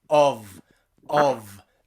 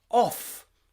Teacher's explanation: one is voiced the v and one is voiceless the f